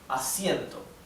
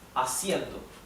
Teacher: Because we have two vowels that stay together in the same syllable. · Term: diphthong